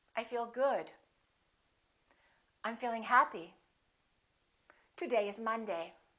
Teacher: making sure that your voice goes down at the end that your pitch goes down